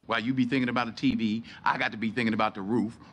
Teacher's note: notice that he has slightly longer pauses between his thought groups